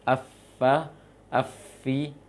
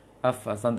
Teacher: ujung gigi seri atas dengan bagian dalam atau perut bibir bawah